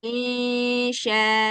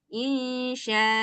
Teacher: Hamzahnya nggak boleh dimatikan. Harus dibaca 2 harkat.